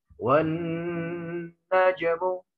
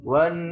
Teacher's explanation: Yang kedua, posisi wan ini nun bertasydidnya maka berubah menjadi gunna, dengung. Menahan huruf nun disertai dengungan sekurang-kurangnya 2 harokat.